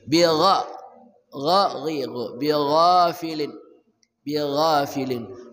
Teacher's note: ghain gha dari ujung kerongkongan